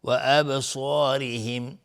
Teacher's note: و ابصارهم با اینجا قلقله میخواد چون ساکنه